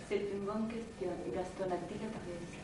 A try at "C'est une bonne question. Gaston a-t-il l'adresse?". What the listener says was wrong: Bon, alors ici, de manière générale, hein, la nasalisation de la voyelle nasale n'est pas suffisamment obtenue, hein, puisque le nasal est remplacé par une voyelle